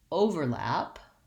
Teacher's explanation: in the noun overlap i have first syllable stress